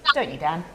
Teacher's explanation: with question tags, when you're confirming information you already know, you use falling intonation